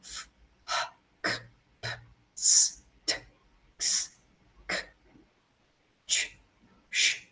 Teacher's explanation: And then there are the unvoiced consonants. There's no vibration, but you push out air.